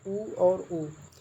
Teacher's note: क्यों ओष्ठीय? क्योंकि आप ऊ करके बोलेंगे तो आपके ओष्ठ जो है गोलेकार हो जाएंगे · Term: ओष्ठीय स्वर